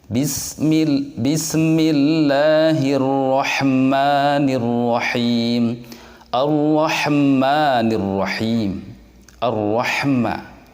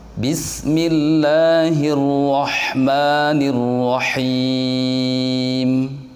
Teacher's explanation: tidak boleh ada pantulan disitu karena huruf Sin dan hak bukan bagian dari huruf yang mempunyai sifat Qalqalah